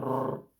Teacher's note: রা শব্দের উচ্চারণটা এভাবেই হচ্ছে যে মনে হচ্ছে পুনরাবৃত্তি হচ্ছে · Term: তাকরির